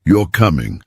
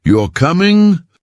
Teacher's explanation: Say it flatly: you're coming. Statement. Now say it with rising tone. You're coming? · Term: intonation